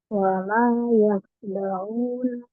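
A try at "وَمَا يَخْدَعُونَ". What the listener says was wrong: Kuatkan kho-nya sudah. Wa ma yakhda'una. Kita coba kuatkan kembali di huruf kho ya. Huruf kho-nya. Nah, satu hal yang peribadian di kho-nya, ketika kemarin kan kita sampaikan bahwa kho itu dia termasuk mufakhom ya.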